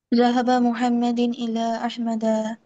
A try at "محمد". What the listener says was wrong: ওই মুহাম্মাদিন বললা কেন?